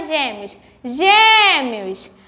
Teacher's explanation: o acento circunflexo que é um som mais fechado